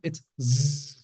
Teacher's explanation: It's that buzz sound. Vibration again, buzz.